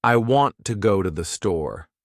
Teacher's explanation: The words want, go, and store are stressed. The other words I, to, and the are much faster and softer. That's the natural rhythm of English. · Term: stress-timed language